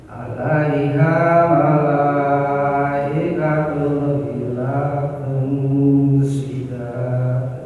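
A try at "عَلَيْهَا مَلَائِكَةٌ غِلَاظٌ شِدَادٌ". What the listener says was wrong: ya, shinnya perlu dilatih agar lebih besar ya. Shin. PR-nya sama shinnya kurang besar, kurang mantap gitu. Tapi sudah shin, sudah shin.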